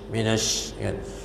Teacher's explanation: Tapi kalau syin dia berhamburan, angin tu kuat. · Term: tafasi